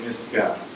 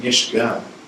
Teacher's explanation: you would have said Nisga'a with a K sound. You said Nishga with an SH sound.